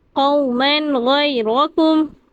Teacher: غیرکم پہ بھی یالین کی قواعد ہو رہی ہے، یا ساکن ہے، اس سے پہلے زبر ہے، یہاں یالین ہے، یالین کو بغیر کھینچے پڑھیں گے